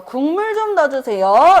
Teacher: 비음이 기역에 영향을 주게 되면서 발음될 때 기역은 뭐가 된대요? 이응이 된대요.